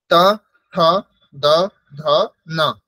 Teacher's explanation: ত বর্গের উচ্চারণ স্থান হচ্ছে দন্ত। আমরা স পড়েছিলাম আগের দিন, দন্ত্যস্য, সেই রকমই উচ্চারণ স্থান হচ্ছে ত বর্গের উচ্চারণ স্থান দন্ত।